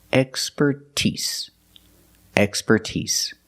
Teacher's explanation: with expertise, we put the stress on the first and third syllable. That's the first and the last syllable.